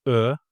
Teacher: The last vowel is Ö. It's a front and rounded one.